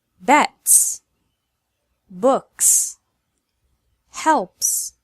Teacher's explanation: S is pronounced S whenever it follows an unvoiced sound